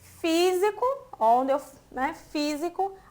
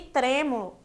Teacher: físico tá um som mais aberto, diferente de trêmulo, que eu falo com um som mais fechado.